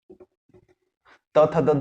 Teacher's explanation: जीभ का अगला हिस्सा आपके दांत को टच करता है, तो ये है दंत्य।